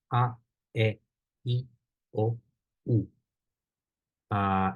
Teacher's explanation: Your lips are a lot tighter on those than when you're saying the English vowel sounds. And generally speaking, they are shorter than English vowels.